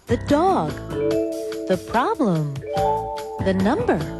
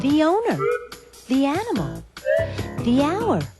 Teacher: you hear thee before a vowel sound